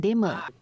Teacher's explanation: sebutan dialek Perak lebih kepada penggunaan vokal I pepet seperti perkataan dema